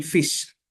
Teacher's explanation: Next is labiodental, our lower lip and upper teeth will touch.